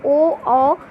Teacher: ओ कंठोष्ठ कंठ गला और ओठ के द्वारा